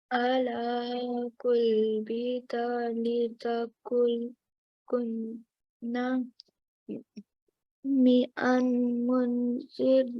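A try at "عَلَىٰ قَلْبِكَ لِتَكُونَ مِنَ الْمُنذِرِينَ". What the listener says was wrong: Okay, so ala qalbika ala qalbika litakuna. Okay, so here, just be careful when you when I'm hearing it, sometimes sounds like you're saying qul. Okay, this is a fatha, so we have to say qal. Okay, qal.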